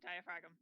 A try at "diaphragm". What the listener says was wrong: Oh, you pronounce the G, whereas it's supposed to be silent.